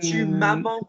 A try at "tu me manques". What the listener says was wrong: No, tu me manques. Get me the pronunciation. Tu me manques, not tu m'as manques.